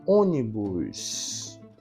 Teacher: a antepenúltima sílaba é a sílaba tônica